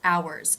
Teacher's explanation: It's spelled with an H, but the first sound is the ow as in now diphthong.